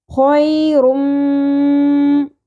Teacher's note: میم کے اوپر تشدید ہے تو یہاں پہ ہم غنہ بھی کریں گے